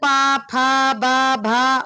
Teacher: दोनों ओठों के स्पर्श से बोले जाने वाले वर्ण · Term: ओष्ठ वर्ण